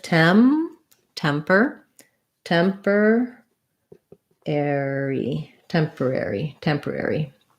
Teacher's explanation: Temporary, we tend to do temporary, all of the syllables. So first syllable stress, tem. The OR is an ER sound, temper.